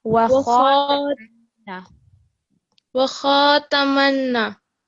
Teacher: kha just needs to be a little bit thicker.